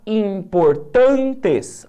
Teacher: a respectivamente uma palavra paroxítona e uma proparoxítona vamos lá importantes a sílaba tônica tá que é a penúltima sílaba né a segunda sílaba de trás para frente